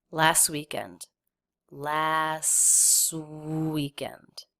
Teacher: we tend to drop the T when it comes between two other consonant sounds last weekend so just connect the S sound right into the · So just connect the S sound right into the W. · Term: the tea is dropped, the T is dropped